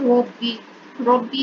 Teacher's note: اگر دیکھیں ربی, ربی جو ہے را جو ہے وہ موٹا کر کے پڑھا جائے گا کیونکہ اس کے اوپر زبر ہے